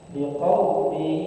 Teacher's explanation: artinya memasukkan tanwin pada ya dengan gunnah, disertai dengan gunnah. Liqaumi, gunnah itu kita merasa di hidung ada getar. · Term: idgham di gunnah